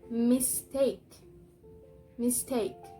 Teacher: So the stressed syllable is take.